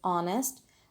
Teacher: age in honest is again silent we pronounce it as honest it starts with the vowel sound instead of a consonant sound